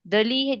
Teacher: It's a second and third tone. It sounds like Delhi.